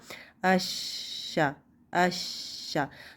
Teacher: वसतुल लिसान को ऊपर तालू की तरफ उठाना है लेकिन उससे चिपकाना नहीं है, थोड़ा सा इस दोनों में गैप होगा तालू और ज़बान के दरमियान में। दूसरी बात ये कि शीन पे आवाज़ भी चलती है और सांस भी जारी रहता है। · शीन पे आवाज़ भी चलती है और सांस भी जारी रहता है। इसका मखरज जो है वो खुला होता है, टोटली बंद नहीं हो जाता।